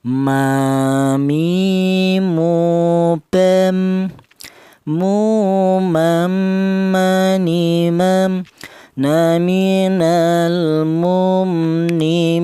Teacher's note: huruf mim ini keluarnya huruf berasal dari kedua bibir yang rapat.